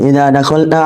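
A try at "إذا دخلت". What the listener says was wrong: Idza dakhalat, salah ya, salah harokat.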